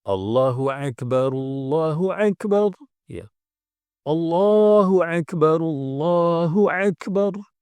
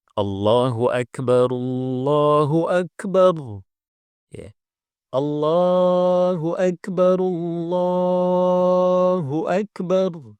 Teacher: perhatikan Hamzah jangan dibaca Ain karena ada yang membaca Ain